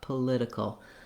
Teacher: this T in political is a flap. I wrote it here as a D because it's voiced and it's a light touch up